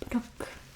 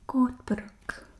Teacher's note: any R in Afrikaans will always have a roll